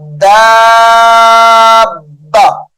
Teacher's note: من دابہ، یہاں پر اخفا ہے، غنہ کریں گے. دابہ، دال کو پڑھ کے با کو سختی سے ادا کریں گے، یعنی دال با کے ساتھ ملے گی بھی اور سختی سے بھی با کو ادا کیا جائے گا۔